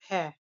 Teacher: भ जो है महाप्राण ओष्ठय व्यंजन ध्वनि के अंतर्गत आता है